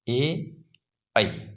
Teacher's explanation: पांचवा है कंठ तालव्य। मित्रों, ये कंठ और तालु दोनों से उच्चारित होते हैं, इसलिए इन्हें कंठ तालव्य स्वर कहते हैं।